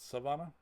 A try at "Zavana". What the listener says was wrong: It's It's a Z. Zavana.